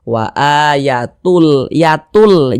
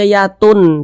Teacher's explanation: bunyi tanwin itu dia masuk ke huruf lam melebur dia ke huruf lam sehingga kita baca wa a Yatul Yatul Jangan dibaca Yatun tapi · cara membacanya dengan cara memasukkan kemudian tidak disertai dengan ghunah tidak ada dengungan dia jadi baca pendek saja yang dimasukkan itu apanya bunyi tanwinnya ini jadi bunyi nun sukun · tidak didengungkan tidak digunahkan jadi pendek saja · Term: idgham bila ghunah